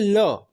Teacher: जिह्वा क्या होती है, बीच में खड़ी हो जाती है और बगल से वायु निकल जाती है, इसलिए क्या हो गया, वो पार्श्विक व्यंजन हो गया।